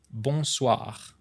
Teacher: With once again, the rolling R sound at the end.